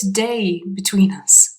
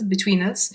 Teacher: quite fast it sounds more like this day between us so there's that link between between and us